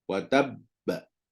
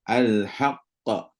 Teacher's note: dia qalqalahkan dia dan delay sikit untuk kalau bagi syaddah dan juga qalqalah pada huruf ba kedua